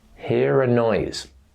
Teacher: Pronounce the R because the next sound is a vowel sound. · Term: linking R